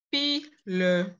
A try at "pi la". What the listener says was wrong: Non, ce n'est pas le, pi, la, ce n'est pas pi, le.